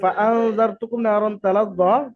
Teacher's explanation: নুন সাকিনের আওয়াজকে একালিফ পরিমাণ গুন্না সহ পড়তে হবে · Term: ইকফায়ে হাকিকির কায়দা